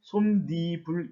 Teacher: 이 중간에 없었던 니은 소리가 덧붙여서 결국에는 솜니불 이렇게 발음이 됩니다. 이런 경우 니은 첨가 현상이 일어난다고 할 수 있겠죠.